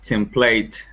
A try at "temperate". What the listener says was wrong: Temperate. Temperate with an R.